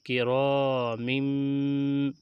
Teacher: سین زبر سا، فا زبر فا، صفا، را زبر را، سفرا، تا دو زیر تن، سفرتن، کاف زیر کی، را الف زبر را، کی را، میم دو زیر من، کرامم، تنوین کے بعد با آ رہی ہے، یہاں پہ اقلاب ہوگا